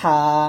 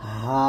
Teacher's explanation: হলকের মধ্যখান হইতে আওয়াজকে চাপাইয়া উচ্চারণ করতে হবে, আর এই হা হলকের শুরু হইতে সহজ আওয়াজে উচ্চারিত হবে। তো এটা হবে হা, আওয়াজকে চাপ দিয়ে হা, আর এটা নর্মাল ভাবে হা, এরকম ভাবে আমরা উচ্চারণ করব।